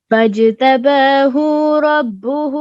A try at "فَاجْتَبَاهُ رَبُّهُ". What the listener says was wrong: ہو کو لمبا ہو گیا، یہ فاجتباہ کی ہو کو لمبا نہیں کرنا، ربہ کی ہو کو لمبا کرنا ہے، فجعلہ کو بھی۔ پھر سنو، فاجتباہ رب ربه فجعله من الصالحين.